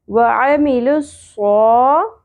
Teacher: یہاں پہ اکثر لوگ آ کو لمبا کر دیتے ہیں، آ کو نہیں کھینچنا ، وعاملوا الصا نہیں پڑھنا، وعمی، وعملوا الصا، لام زیر لی،